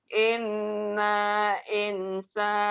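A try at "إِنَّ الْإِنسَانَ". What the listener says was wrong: Innal, bukan inna, innal. Itu dijamber. Innal, nyamber ke sukun. Innya guna ditahan. Innal.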